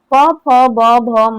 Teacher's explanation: पूरा प वर्ग का उच्चारण जो है ओष्ठ से होता है